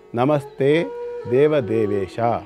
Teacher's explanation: ಯಾವುದು ಮಹಾಪ್ರಾಣಾಕ್ಷರಗಳಿಲ್ಲ ಇದರಲ್ಲಿ, ಎಲ್ಲವೂ ಕೂಡ ಅಲ್ಪ ಪ್ರಾಣಾಕ್ಷರಗಳೇ